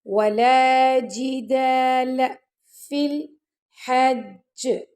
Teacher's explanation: جیم کے نیچے کسرہ ہے یعنی زیر ہے تو اس کو جی کر کے پڑھنا، آپ نے جے کر کے نہیں پڑھنا۔ ولا جدال فی الحج، اب یہاں پہ ہم نے پہلے جیم کا شدہ پڑھا ہے پھر اس کے اوپر ہم نے قلقلہ کیا۔